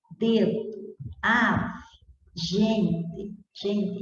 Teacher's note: E na palavra dedo, a pronúncia do O já vai sendo amortecida